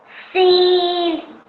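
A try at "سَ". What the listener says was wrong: This, yes, this letter is a sin, but as soon as it gets a fatha on top of it, how would you pronounce that? Sa. Sa. So this has a normal fatha on top of it, so you pronounce it as sa.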